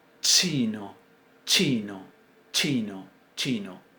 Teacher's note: primero cerramos completamente el conducto vocal pero cuando lo abrimos lo abrimos sacando el aire por un lugar estrecho que le da un sonido particular